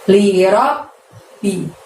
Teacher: Lalu ada lafaz lirabbihi. Lirob, robnya masukkan ke ba tasydid, ditahan, ditekan, baru bunyi bi. Lirabbi.